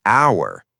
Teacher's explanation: when you say hour, you don't say the h sound. You say hour. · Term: vowel sound